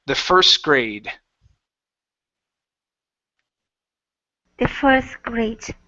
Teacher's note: All right, let's go to, okay, first grade. So again, we have a T at the end surrounded by an S and a G, so that T disappears